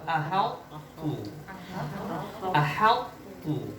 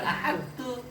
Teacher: Bukan ahad tu. Nggak melebur sempurna, makanya ini disebut juga idgham naqis. · to-nya tuh udah melebur ke ta. Cuman secara karakter huruf to itu jauh lebih kuat dari ta, sehingga masih menyisakan apanya?